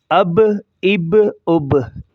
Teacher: با کو موٹا کریں گے کیونکہ یہ قلقلہ میں سے ہے، حروف قلقلہ میں سے ہے اور موٹے لفظ پڑھے جاتے ہیں تو ان میں سے یہ شمار ہوتا ہے۔